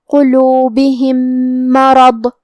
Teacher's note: کلمت مرض میں میم حروف الادغام میں سے ہے تو ہم یہ میم کو دوسرے میم میں ملا کے ایک ہی میم پڑھیں گے لیکن تشدید کے ساتھ